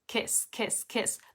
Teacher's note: the word kiss doesn't have a schwa in it it has the e sound